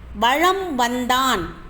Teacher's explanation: மகர மெய்யானது தனக்குரிய அரை மாத்திரை அளவிலிருந்து குறைந்து கால் மாத்திரை அளவில் ஒலிக்கிறது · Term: மகர குறுக்கத்திற்கு